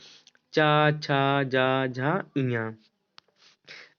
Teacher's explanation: जिन व्यंजनों के उच्चारण में जीवा के पिछले अग्र भाग से कठोर तालु को स्पर्श करता है उसे तालव्य व्यंजन कहते हैं।